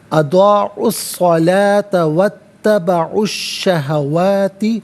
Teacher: واو پر زبر ہے، اس سے اتبعوا کی تا کے ساتھ ملائیں گے، درمیان میں سے الف یعنی حمزہ کو حذف کریں گے · اضاعوا میں عین پر پیش ہے، اسے الصلاۃ کی صاد کے ساتھ ملائیں گے، درمیان میں سے الف یعنی حمزہ کو حذف کیا جائے گا